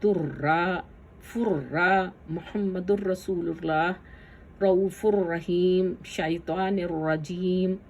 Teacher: را اور لام لیٹر جہاں بھی آیا وہاں پر ہم نے غنہ بغیر کے نکالا ہے